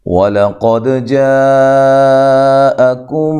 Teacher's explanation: لام کو باریک، قاف کو موٹا دال پہ قلقلہ کرنا ہے ، ہلانا ہے، جاء یہ جو مد ہے مد واجب ہے،